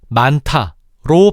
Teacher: 많다는 다가 아니라 많다로 발음하는데 이때 티읕의 정체를 분석해보면 만의 종성 히읗과 다의 초성 디귿이 만나 축약된 것임을 알 수 있어. 다만 이때 주의해야 할 건 이것이 자음군 단순화가 일어난 게 아니라는 거야.